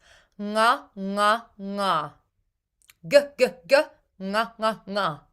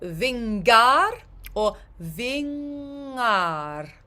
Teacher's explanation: it's an NG with your tongue a little bit further back um touching the roof of your mouth